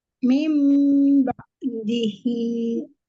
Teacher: nun sukun ketemu huruf ba mengubah ee nun sukun menjadi mim sukun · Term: iqlab